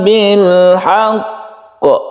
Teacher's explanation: Ingat ini adalah qalqalah kubra, tapi di sini ada tasydid ya. Jadi kita tasydidkan dahulu, baru kita pantulkan atau kita qalqalahkan huruf qaf ini.